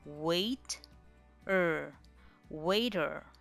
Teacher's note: The R sound takes over that you hardly get to hear the E vowel sound.